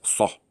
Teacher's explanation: So that's an S, it's a fat S, it's not Sa, it's Sah.